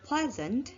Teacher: the stem pleasant which the stress is on the first syllable